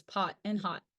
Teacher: the short o is with the tongue positioned at a mid height and back in the mouth with lips rounded